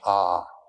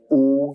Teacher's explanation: it's a it's a wonderful word it's written a u m you start in the back of the mouth a and then U you fill the mouth and M closes at the mouth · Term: om